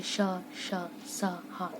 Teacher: जब हम इन व्यंजनों का उच्चारण करते हैं तो हमारे मुख से जो हवा है वो रगड़ खा के निकलती है। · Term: ऊष्म व्यंजन